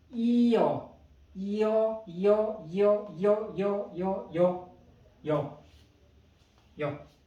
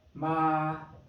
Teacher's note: Vowel E, vowel 어 become 여.